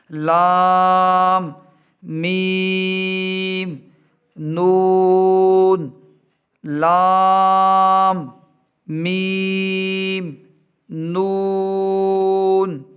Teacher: लाम ज़बान से निकलता है, मीम होंठों से निकलता है और नून के ऊपर एक नुक्ता होता है और इसकी आवाज़ नाक से आती है।